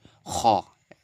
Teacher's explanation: খ একদম একদম কন্ঠনাল শেষ থেকে উচ্চারণটা করবেন